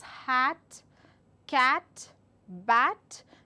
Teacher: I elongate my mouth while I give out the sound, and it is also a short sound. I am not supposed to stress that sound.